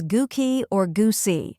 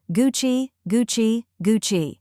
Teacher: the correct way to say it is Gucci two syllables with a soft cha sound like in the word cheese